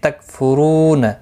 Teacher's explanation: رو واو مدہ ہے، اس کو ایک الف کی مقدار کے برابر کھینچ کر پڑھیں گے